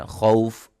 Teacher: خوف 1 الف کے برابر لمبا کرتے ہوئے، جس کو قصر کہا جاتا ہے